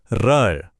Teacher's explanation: लुंठित र जिसमें जीभ की नोक कांपती है। एक ट्रिल होता है र।